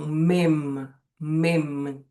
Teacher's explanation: A gente fecha a boca ao pronunciar mem. A gente toca duas vezes os lábios nos lábios para pronunciar o mem. Então, mem. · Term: bilabial